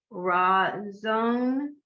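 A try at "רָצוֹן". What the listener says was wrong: Not zone, not z. T. Ratzon.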